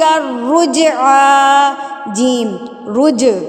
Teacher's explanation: جیم رج، جیم کو ہلا کے پڑھیں گے، قلقلہ